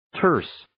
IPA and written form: tɜːrs (Terse)